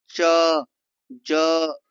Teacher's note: च ज तालों में रुकावट